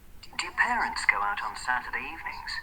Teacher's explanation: So we have a high point on parents, right? We have a high point on evenings. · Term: boundary tones